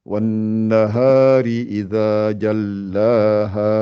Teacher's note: Faites bien les deux temps à la fin. Donnez-lui la durée.